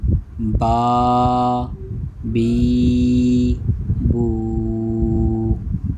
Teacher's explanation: با کھڑا زبر با، با کو ادا کرنے کا طریقہ وہی دونوں ہونٹوں کے تر حصے سے یہ ادا ہوگا